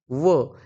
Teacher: दंतोष्ठ म्हणजे दात व ओठ